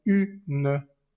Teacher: Y al separarla, la U queda en un lado y la N queda en otro lado. Entonces se rompe esa vocal nasal. Ya no podemos decir como an o sino que queda U por un lado y ne por el otro.